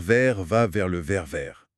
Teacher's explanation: C'est un point difficile pour beaucoup pour ce R qui vient du fond de la gorge. Ouais. L'astuce, c'est d'essayer d'imiter un tout petit gargarisme tout doux, hein.